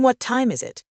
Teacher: the intonation usually falls at the end. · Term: falling intonation